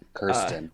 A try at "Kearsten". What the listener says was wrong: Kearsten with the ear.